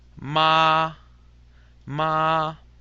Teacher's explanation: we stay at the top of the register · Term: first tone